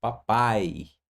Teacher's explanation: Veja, a sílaba que mais se prolonga é a última, papai, certo? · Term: sílaba tônica